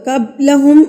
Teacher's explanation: قاف کو ہم پور پڑھیں گے اور با پر ہم قلقلہ کریں گے یعنی کہ اس کو مار کے پڑھیں گے لفظوں کو قبلہم · پر ہم قلقلہ کریں گے با ساکن ہے ہمارے پاس تو با ساکن کو ہم ہلا کے پڑھتے ہیں یعنی کہ اس پر قلقلہ کریں گے